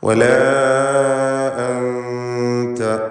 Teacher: വലാ അൻത ഇതിലുള്ള അലിഫിൻ്റെ ദീർഘം മദ് മുൻഫസിൽ ജായിസ് എന്നതാണ്. 4-5 ഹറക്കത്തിൻ്റെ അളവിൽ അലിഫിനെ ദീർഘിപ്പിക്കുക